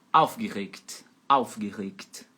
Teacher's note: E a sílaba tônica é a primeira, em cima do au.